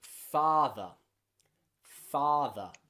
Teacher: In British English, it's not rhotic, which means we don't round it like this.